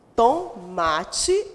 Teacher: Quando eu escrevo tomate, eu pronuncio tomate, o ma sai mais forte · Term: paroxítona